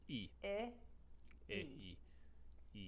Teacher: The I vowel sound found in words like lit and simple becomes E in the Spanish accent. From I, you're going to widen the corners of the mouth and bring the jaw up slightly, going from I to E.